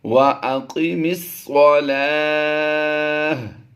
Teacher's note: گول تا کو وقف میں ہم نے ہا ساکن سے بدل کر پچھلے حرف سے یعنی لام کھڑی زبر لا سے ملا دینا ہے۔ یاد رہے یہ واؤ پر کھڑی زبر نہیں ہے، یہ لام پر کھڑی زبر ہے۔